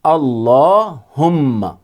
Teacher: عام طور پر اسے پڑھا جاتا ہے اللہم صلی علی، تو اللہم نہیں ہے، اللہم، لام کے اوپر بھی تشدید ہے اور ہم میں میم کے اوپر بھی تشدید ہے۔ لام کو بھی ڈبل پڑھیں گے اور میم کو بھی ڈبل پڑھیں گے۔